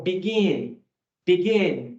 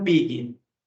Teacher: a entonação está no gin